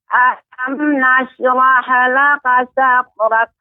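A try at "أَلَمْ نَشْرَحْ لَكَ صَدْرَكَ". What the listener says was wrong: Ya, pengucapan ha ya, pengucapan ha. Alam nashrah laka sadrak. Ya, haknya tidak mengikut alam nashrah laka rahalaka. Nah, ini kurang tepat. Jadi nashrah dimatikan ya dan diberikan sifatnya yaitu hamas. Alam nashrah laka sadrak.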